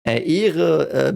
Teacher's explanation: because of the H that's silent, the E is a bit longer, and the E in English, like it's pronounced E in German.